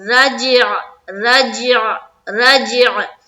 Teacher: حلق میں آواز لے کر جائیں گے اور عین نکالیں گے